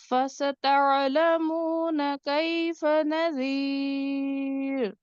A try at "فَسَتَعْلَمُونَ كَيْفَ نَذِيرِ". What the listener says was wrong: ٹھیک ہے، وقفاً را آپ کا باریک ہوا یہاں پہ.